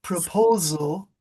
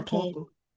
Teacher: It's when the S becomes a Z, proposal.